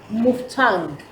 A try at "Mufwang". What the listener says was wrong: Mufwang is a Mongo man. Mufwang. The T is silent, so it's Mufwang. Mufwang.